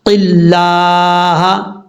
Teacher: لفظ اللہ سے پہلے زیر ہے قاف کے نیچے تو اس کا مطلب لفظ اللہ بریک پڑھا جائے گا، اس کو پر پڑھنے کی ضرورت نہیں ہے.